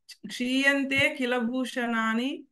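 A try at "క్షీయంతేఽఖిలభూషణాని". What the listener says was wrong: విడదీసి చెప్పండి, ఇక్కడ ఈ అవగ్రహాన్ని విడదీసి చెప్పండి. మీరు క్షీయంతే కిలభూషణాన్ని, అఖిల భూషణాన్ని, అఖిలము అంటే సమస్త భూషణాలు అని, సమస్తమైనటువంటి ఆభరణాలని కూడా, ఆభరణాలు కూడా భూషణాన్ని మళ్ళీ అదే.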